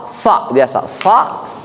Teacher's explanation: Lidah itu turun kena gusi depan bagian bawah. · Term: huruf sa